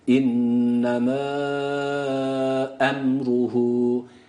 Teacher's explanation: Mim burada sakin mimin izharı dedik dudaklar Tamamen kapandı